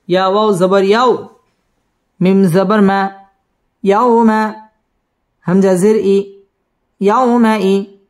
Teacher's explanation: ইয়াও জবরের বাম পাশে জজমওয়ালা ওয়াও, লিনের হরফ তাড়াতাড়ি পড়তে হবে। ইয়াউমা ইজিন ইজহার গুন্নাহ ছাড়া স্পষ্ট করে পড়তে হবে।